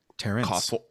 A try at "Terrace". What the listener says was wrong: There's no N. Terrace. No N.